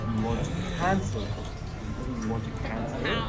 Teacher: It's a slight rising voice for the question.